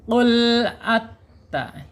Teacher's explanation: Hati-hati lam ya. Lam di sini awas jangan sampai ada pantulan ya, karena bukan huruf qalqalah. Lam secara makhraj ada di alisan ya.